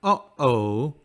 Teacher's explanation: insert a pause between the vowels this creates a glottal stop within a word